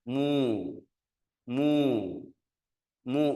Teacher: harakat damah bergerak ke munyung